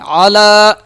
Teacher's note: لام کو ایک الف کے برابر کھینچیں گے کیونکہ اس کے اوپر کھڑا زبر ہے۔ علی محمد، محمد، میم پہ جو ہے غنہ ہوگا کیونکہ اس کے اوپر تشدید ہے۔